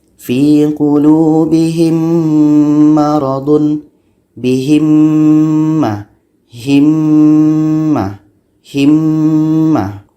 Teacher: Dah huruf yang sama dah jelas masuk kan? Jadi di sini kita baca dengung dua harkat.